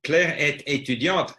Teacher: The French are not so up and down. They're kind of monotonous.